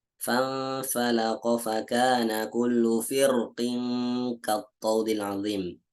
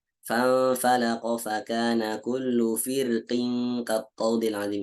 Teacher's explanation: Firqin di sini dibacanya ada dua pilihan. Dia bisa dibaca tebal atau bisa dibaca tipis.